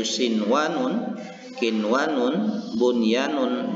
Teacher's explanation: membacakan bunyi nun mati ini dengan jelas dan tidak berdengung, atau dibaca dengan izhar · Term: idgham goiru Kamil, idgham ghairu kamil